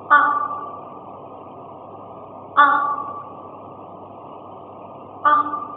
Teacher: khi phát âm chúng ta sẽ phát âm nguyên âm này với độ dài kém nguyên âm o khoảng hai lần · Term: nguyên âm ngắn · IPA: /ʌ/